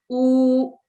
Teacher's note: वाव मदिया से पहले वाले हर्फ पर हमेशा दमा की हरकत होती है और इसकी अदायगी का वक्त भी 2 सेकंड होता है। जैसा कि आप देख रहे हैं कि वाव मदिया है और उससे पहले वाले हर्फ पर दमा की हरकत मौजूद है और इसको हम 2 सेकंड के लिए लंबा करेंगे।